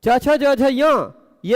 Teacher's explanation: पांच वर्ण ऐसे हैं जिनका उच्चारण स्थान तालु है और आभ्यंतर प्रयत्न स्पष्ट है। इस कारण यह पांचों वर्ण भी एक दूसरे के सवर्ण है।